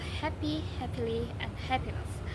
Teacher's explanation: Happy Happily and happiness all have the stress on the first syllable